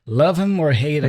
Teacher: So here we drop the H for him, right?